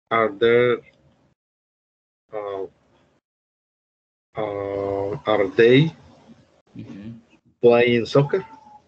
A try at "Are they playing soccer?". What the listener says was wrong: Are they playing soccer? La estructura está bien, pero cuando vayamos a hacer la pregunta, debemos darle ese énfasis, ¿verdad? Are they playing soccer?